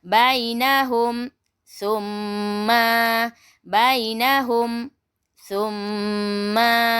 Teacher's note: Summa tu kena dengung lah sebabnya mim syadah kan, wajibul gunnah.